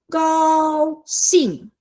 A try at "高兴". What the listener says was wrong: Yeah, your 高 has to be longer.